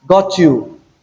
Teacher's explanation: the combination of T plus Y will give us Ch, which is a palato-alveolar sound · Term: coalescence